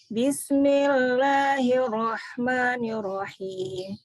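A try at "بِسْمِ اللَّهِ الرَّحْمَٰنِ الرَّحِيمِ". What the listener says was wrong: Hirnya kurang menekan, Bu. Bu, hirnya kurang menekan. Bismillahirrahmanirrahim.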